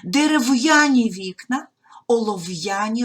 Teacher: приголосні перед апострофом читаємо твердо не зливаємо